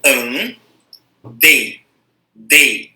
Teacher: O que eu pronuncio com força é o E. Por isso ele é a vogal e o I é semivogal.